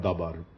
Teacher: on a word like dabar, the second syllable bar contains the accent, so it's a closed accented syllable.